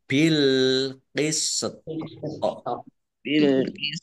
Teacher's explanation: th sukun itu bacaan qolqalah maka dibaca memantul ya ditampakkan pantulannya